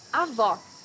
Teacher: in portuguese avoc grandmother here needs to hear the sound of the last o in the syllable it should be an open o